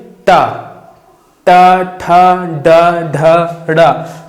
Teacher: तो इसमें आप देखेंगे जीभ हमारी मुड़ जाती है। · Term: मूर्धन्य